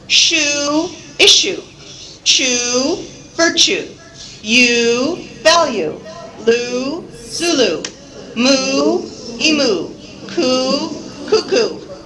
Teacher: concentrate on keeping that last syllable very unstressed, right? Very short and very unstressed.